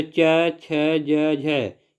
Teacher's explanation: जो तालु के सहयोग से बोले जाते हैं उसे तालव्य व्यंजन कहते हैं